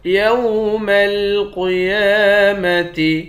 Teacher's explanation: قاف کو موٹا پڑھیں گے، یا پر کھڑا زبر ہے، ایک الف کی مقدار کھینچیں گے